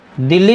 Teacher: यह युग्मक ध्वनि है या द्वित यानी आधा ल पूरा ल